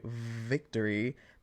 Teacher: to do it without touching your teeth to your lip cuz when we say Victory the teeth and the lip are what's making the vibration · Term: V sound